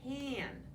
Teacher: That A has the sound changed because of that nasal N. It changes the way that A sounds.